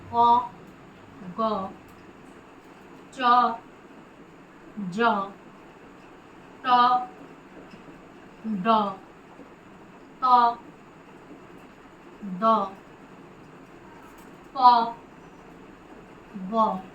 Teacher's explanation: এদের উচ্চারণে শ্বাসবায়ুর জোর অপেক্ষাকৃত কম দিতে হয়। তাই বর্গের প্রথম ও তৃতীয় বর্ণ যেমন ক, গ, চ, জ, ট, ড, ত, দ, প, ব এই বর্ণগুলিকে আমরা বলি অল্প প্রাণ বর্ণ।